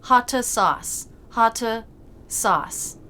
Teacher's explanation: add an additional schwa sound between words in order to link in these situations. So hot sauce becomes something more like hotta sauce, hotta sauce.